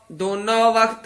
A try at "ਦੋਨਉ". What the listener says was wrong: ਦੋਨੋਂ ਨਹੀਂ ਕਹਿਣਾ ਦਦੇ ਹੋੜਾ ਨਨਾ ੳ ਬੰਦ ਮੂਲਾ ਔਂਕੜ